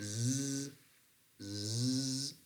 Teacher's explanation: put your fingers on your throat when you are pronouncing that prolonged Z you feel a very uh uh strong vibration in in your throat or technically in your vocal folds